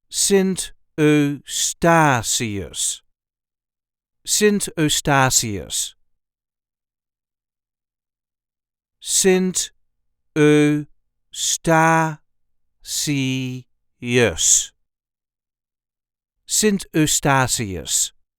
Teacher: There is a light emphasis on the third syllable